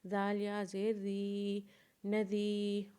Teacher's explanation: زال کو یا کے ساتھ ملائیں گے اور اسے ایک الف کے برابر کھینچیں گے